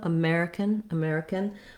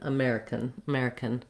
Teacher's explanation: You want to feel that rhythm. Then when we change to American, we add an N sound, and we almost take out that vowel entirely. So it has the same rhythm, American, American, but instead of really much length with the k at the end of American, it almost goes directly to the N, American, American. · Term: syllabic N